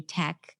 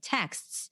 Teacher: you tend to drop consonants and you may say tech instead of texts, that will affect your clarity 100%.